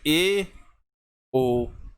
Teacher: जिन स्वरों के उच्चारण मुख द्वार आधा बंद रहता है, वे स्वर अर्धसंवृत स्वर कहलाते हैं